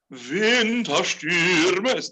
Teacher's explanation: It's gonna be combinations of short and long vowels. So Winterstürme, Stürme is gonna be long.